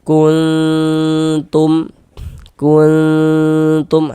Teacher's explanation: Bunyi non sukunnya kita samarkan. Kemudian kita dengungkan juga kita gunahkan.